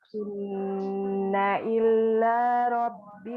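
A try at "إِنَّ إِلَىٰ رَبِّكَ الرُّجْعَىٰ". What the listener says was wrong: Inna ila tidak ada tasydidnya. Inna ila rabbika ruj'a. Inna ila rabbika ruj'a. Ila jangan tasydidkan. La-nya. Inna ila rabbika ruj'a.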